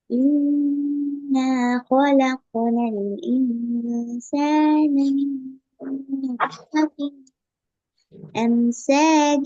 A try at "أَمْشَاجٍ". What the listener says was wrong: இதை போதாது. என்ற அந்த சேட சவுண்ட் போதாது. அம்ஷாஜின் அம்ஷ ஷ அந்த அந்த உச்சரிப்பு சவுண்ட் வரணும். அல்லது சீண்ட சவுண்ட் தான் வரும்.